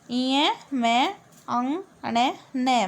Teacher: तो हम इनकी जो ध्वनि है, जो साउंड है, वो हमारे नाक से बाहर निकलती है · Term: नासिके वर्ण